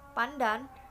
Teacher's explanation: dalam kata pandan sebelum D diucapkan secara apiko-palatal N karena pengaruh secara regresif dari bunyi letupan palatal D.